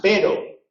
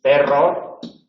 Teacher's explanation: en el vibrante simple eh la lengua se aproxima a los alveolos